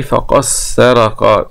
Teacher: هذا بالإدغام لأبي عمرو وهشام وحمزة الكسائي وخلف